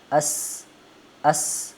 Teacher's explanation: हल्की सीटी की आवाज भी इसको पढ़ते वक्त आएगी